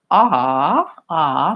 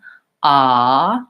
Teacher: my jaw is open. My tongue is near the bottom.